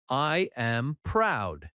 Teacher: Feel the drop at the end. That falling tone shows confidence